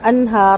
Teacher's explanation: را کو ساکن کریں گے تو پر کر کے کریں گے